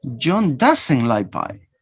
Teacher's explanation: Now I change the stress from John to doesn't.